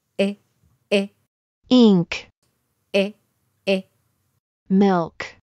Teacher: ちょうど日本語のいと絵の中間の音になります